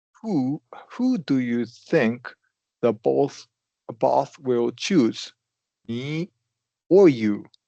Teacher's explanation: up for the content word, and then up for the first choice, and down for the second choice